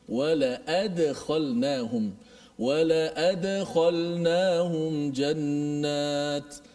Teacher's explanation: Dal tu dimati, kemudian dilantunkan bunyinya. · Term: qalqalah